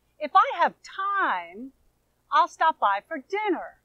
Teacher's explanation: listen to how I'm emphasizing dinner, the stressed syllable